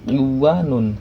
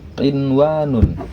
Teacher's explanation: maka bukan dibaca iwanun tetapi tetap idhar, dibacanya jelas menjadi inwanun